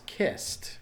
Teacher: the past tense is kissed so that takes a T sound